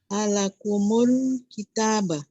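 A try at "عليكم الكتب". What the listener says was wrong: Kalau kitab itu taknya panjang, kitabun. Kalau di sini pendek semuanya, ya kan, Mas? Kalau pendek ini bentuk jamaknya, dibacanya kutub.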